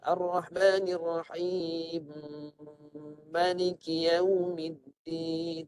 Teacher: Mim pertama masuk mim kedua dan diletakkan sabdu dan dengung di situ, dua harakat. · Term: idgham kabir